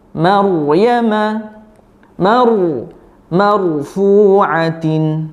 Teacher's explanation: Ra sukun atau mati didahului huruf berharokat fathah, berarti ra-nya dibaca tafkhim atau tebal.